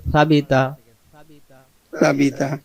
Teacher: ছা অক্ষর জিহ্বার আগা থেকে নরম করে পড়তে